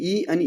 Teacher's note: ई आणि ई म्हणताना आपल्या जिभेचा पहिला शेंडा म्हणजे सुरुवातीचा शेंडा अग्रभाग उचलला जातो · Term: अग्रस्वर